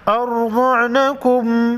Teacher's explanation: ارضعنکم را اور ضاد کو موٹا پڑھیں گے، را پر جزم ہے، اس سے پہلے حرف حمزہ پر زبر ہے، را کو موٹا پڑھیں گے